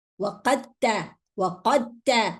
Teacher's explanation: Here we are dropping the dal. So we are not mentioning the dal. We are going to read the qaf and then go to ta.